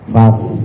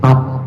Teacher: fa-nya bibir bawah digigit gigi atas. Faf, ada hembusan anginnya sedikit.